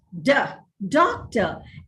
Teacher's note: the word doctor is stressed on the first syllable